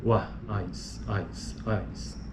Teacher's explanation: Decrescente justamente porque ele está a parte periférica está reduzindo a sua força, né? O pico está no A, nesse caso, e a semivogal é o I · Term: ditongo decrescente